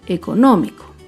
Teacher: Por último, otro ejemplo de una palabra esdrújula es la palabra económico. Económico se acentúa en la antepenúltima sílaba. Económico. Y como se ha dicho, todas las palabras esdrújulas llevan tilde.